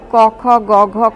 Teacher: জিহবা মূলের পিছন দিক স্ফিত হয়ে কণ্ঠের দ্বার বা কোমল তালুর প্রান্ত তথা আলজিবের কাছাকাছি শ্বাসবায়ু নির্গমনে বা বাধা দেয়ার কারণে এই ব্যঞ্জন ধ্বনিগুলি উচ্চারিত হয় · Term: কণ্ঠ ব্যঞ্জন